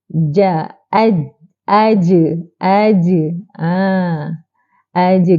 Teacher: jahar ialah tertahan nafas tak keluar angin